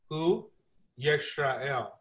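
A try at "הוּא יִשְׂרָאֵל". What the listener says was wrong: Okay, I know I have a list, but that's an S, not an SH.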